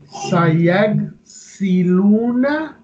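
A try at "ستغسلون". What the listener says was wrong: Satagsiluna. Ta mean you, ya mean he.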